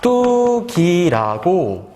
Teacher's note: 깍두기라고 했을 때, 이 깍두기 발음해보면 어떻게 발음되냐면, 깍두기라고 디귿이 된소리로 발음이 됩니다